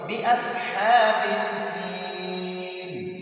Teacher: اصحاب میں ہا کو تھوڑا سا لمبا پڑھیں گے. جب کڑا زبر کڑی زیر الٹا پیش ہو تو ہم اس کو تھوڑا سا لمبا پڑھیں گے.